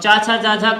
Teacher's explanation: का यहाँ का उच्चारण स्थान तालु